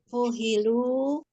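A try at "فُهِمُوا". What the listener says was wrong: Fuhimu. Fuhimu. lamnya hilang, ganti mim.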